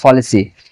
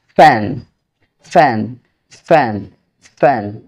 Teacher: আমার মুখ থেকে বেশি পরিমাণে বাতাস বের হচ্ছে, ফলিসি। এটা কিন্তু ফ্যান নয়, এটা সঠিক উচ্চারণ হচ্ছে ফ্যান। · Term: অ্যাসপাইরেটেড